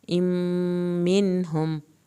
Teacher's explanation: کی شد پہ دیر لگے گی، ام منہم، یہاں پر بھی نون کو ہلانا نہیں ہے اور غنہ نہیں ہوگا کیونکہ آگے ہا